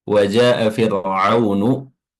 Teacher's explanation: ada mad yang panjangnya lebih dari dua harakat yaitu mad wajib muttasil. Ya, dikatakan wajib karena semua ee quro, semua ahli qiraat sepakat bahwa di sini panjangnya lebih dari dua harakat. · Ya, ini hamzah pada kalimat atau pada kata jaa, hamzahnya berada pada satu kata. Fir'aunu, huruf ra-nya di sini tarqiq, ya, tipis, sukun yang didahului oleh kasrah. · ada mad yang panjangnya lebih dari 2 harokat, yaitu mad wajib muttasil